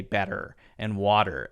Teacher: Americans are more likely to hit that T as a D when there's that vowel sound following the T in the case of better and water. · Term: light D sound